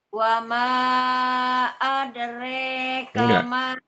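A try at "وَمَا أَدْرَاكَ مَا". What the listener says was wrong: adre qalqalahnya harus jelas, maaf.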